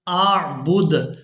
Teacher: وقف کی صورت میں آخری حرف یعنی دال کو ساکن کر دیں گے، با کو دال ساکن کے ساتھ ملائیں گے